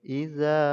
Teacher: Iza dipanjangkan 5 harokat karena mad jaiz munfasil, yaitu ada mad asli bertemu dengan hamzah di lain kalimat. Nah, ini harokat fathah bertemu dengan alif, mad asli kemudian bertemu hamzah dengan di lain kalimat, jadi dipanjangkan 5 harokat.